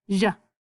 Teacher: Sometimes they say ja, almost like a SH with a Y together, depending on what country you're from